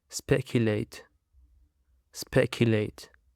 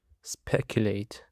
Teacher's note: It actually consists of three syllables, and the stress is on the first syllable.